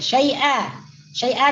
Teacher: Disebut mad iwat karena asalnya tanwin ya. Tanwin di akhir perkataan yang ada alif. Kemudian ketika dibaca waqaf maka dibaca panjang.